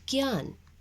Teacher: ज्ञ का उच्चारण स्थान तालु प्लस नासिका से होता है, यानी नाक से होता है।